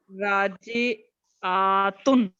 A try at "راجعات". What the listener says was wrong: راجعات. آپ نے تو کچھ زیادہ ہی لمبا کر دیا. راجع کبوتر نہیں بلا رہا ہوتا آدمی آ تو زیادہ ہی لمبا کر دیا. بہت زیادہ ہی لمبا کر دیا. نارمل رکھے.